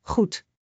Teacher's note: G is a soft throat sound, like clearing your throat gently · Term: The Dutch G